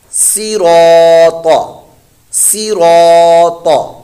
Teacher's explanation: یعنی اس کلمے میں تینوں حروف جو ہیں یہ پر موٹے، صاد بھی پر موٹا، را بھی پر موٹا، طا حروف مستعلیہ میں سے یہ بھی پر موٹا ، تینوں ہی پر موٹے پڑھے جائیں گے، اس میں را